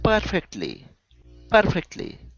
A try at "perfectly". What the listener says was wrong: Okay, almost. You're saying perfect. Okay, you're rolling your R. So you want to push it down so you can pronounce that good R. Perfectly.